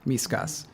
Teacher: The stress pattern is clear. It's low, high.